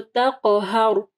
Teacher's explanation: را ساکن کے اوپر وقف ہو رہا ہے تو تقہر، تو را جو ہے ہیوی پڑی جائے گی۔ اگر را ساکن سے پہلے والا حرف جو ہے زبر یا پیش ہوگا تو را جو ہے اس کو ہم لوگ موٹا پڑھیں گے، ٹھیک ہے، اور اگر اس سے پہلے والا حرف جو ہے زیر ہوگا تو پھر را جو ہے نرم پڑی جائے گی۔